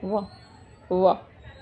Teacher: वाह के लिए क्या है कि ओंठ नीचे वाला यूज हो रहा है और दांत ऊपर वाला यूज हो रहा है, तो ये दांत ओंठ दोनों की हेल्प से बोले जाते हैं, तो वो क्या हो गया, दंतोष्ठ हो गया, ठीक है।